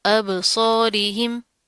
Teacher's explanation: رو کے نیچے زیر ہے، را بریک پڑی جائے گی